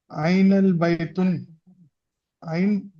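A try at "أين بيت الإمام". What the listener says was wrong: الف لام نہیں آئے گا، بیت پہ الف لام نہیں ہے. مضاف ہے، الامام مضاف الیہ ہے نا. تو یہ مضاف ہے تو مضاف پہ الف لام کبھی بھی نہیں آئے گا.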